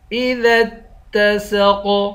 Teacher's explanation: اس قاف کو موٹا بھی پڑھیں گے اور قلقلہ بھی کریں گے